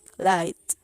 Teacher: air is going through the side of the tongue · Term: light l